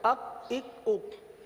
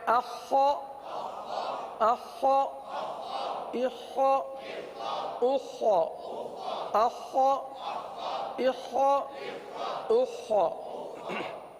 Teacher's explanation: تو اس کو حلق میں اتارے، یہاں پر یہ حلق کے اوپر والے حصے سے ادا ہوتا ہے، حلق میں اتاریے اور خا کی آواز کو پر ادا کیجئے